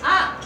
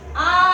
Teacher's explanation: ಅ ಎಷ್ಟು ಮಾತ್ರೆ ಬೇಕು ಒಂದು ಮಾತ್ರೆ ಆ ಎರಡು ಮಾತ್ರೆ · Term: ದೀರ್ಘ ಸ್ವರಗಳು